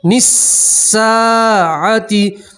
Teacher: سین کے اوپر تشدید ہے، نون کا پہلے سین سے ملائیں گے، یہ الف اور لام نہیں پڑھیں گے، ٹھیک ہے۔ نساعتی، سین کے ساتھ الف مدہ ہے، آپ ایک الف کے برابر کھینچ کر پڑھیں گے